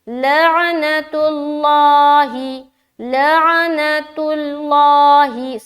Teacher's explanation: کیونکہ تا کے اوپر پیش کی حرکت ہے، اسی لیے لفظ اللہ کا لام موٹا پڑھ رہے ہیں